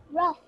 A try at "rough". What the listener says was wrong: Excellent, rough.